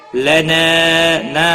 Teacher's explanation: الف مدہ ہے، ایک الف کے برابر کھینچ کر پڑھیں گے۔